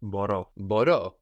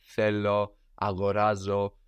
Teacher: And this verb has the accent on the end, no? As opposed to the penultimate, the second last syllable, where it usually is, no? Like θέλω, αγοράζω.